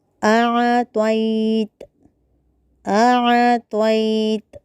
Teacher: فیما اعطیت میں حمزہ کو واضح کرنا ہے، عین ساکنہ کو حلق کے درمیانی حصے سے پڑھنا ہے۔ تو کی جگہ تا پڑھنے سے بچنا ہے یا لین کا خیال رکھنا ہے۔